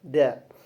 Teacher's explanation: Da itu termasuk makhraj asnani lathwi tadi gigi yang bersentuhan dengan gusi. Kemudian ada infijari, adanya letupan, ada majhur juga, adanya kejelasan dalam pengucapan atau tidak bergetar.